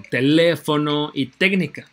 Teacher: llevan acento en la ante penúltima sílaba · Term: esdrújulas